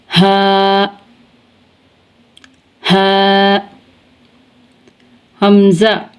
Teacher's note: आगे है हा हा, हमज़ा, हा और हमज़ा इन दोनों का मखरज है انتہائی حلق یعنی حلق کا آخری حصہ جو کہ ہمارے سینے کی جانب ہے، ہا اور حمزہ حلق کے آخری حصے سے ادا ہوتے ہیں